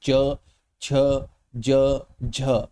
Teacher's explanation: आप बोलिए च छ ज झ, तो आपकी जीभ कहाँ लग रही है? तालु के बिल्कुल बीच में लग रही है